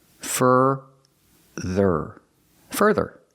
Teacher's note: fur further so both syllables have the same sound further further put the stress on the first syllable